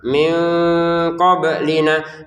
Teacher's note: nun sukun bertemu qof. Baca dengan samar